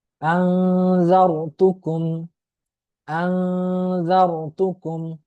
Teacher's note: তো নুন সাকিন এবং তানভিনের পরে ইকফার 15টি হরফের কোন হরফ আসলে ওই নুন সাকিন বা তানভিনকে ইকফা করে পড়তে হয়, অর্থাৎ গুণনার সহিত গোপন করে পড়তে হয়